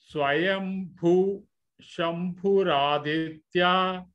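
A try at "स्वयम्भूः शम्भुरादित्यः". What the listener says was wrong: Visargam followed by sha, ish sound has to come.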